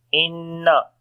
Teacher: Inna, there is a shad sign on the noon, we make gunna.